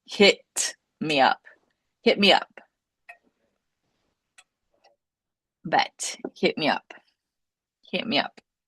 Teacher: Sometimes we have these blending sounds where the final T will go into the next word.